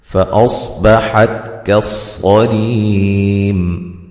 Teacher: فَأَصْبَحَتْ كَالصَّرِيمِ صاد کو موٹا ادا کریں گے، ہلانا نہیں ہے، تا کو جو ہے وہ باریک پڑھیں گے، اس کو بھی ہلانا نہیں ہے، حا کو واضح نکالیں گے، صاد کو موٹا ادا کریں گے، ری را کو باریک یا مدہ ہے، وقفاً بڑی مد کے ساتھ پڑھ سکتے ہیں، ٹھیک ہے۔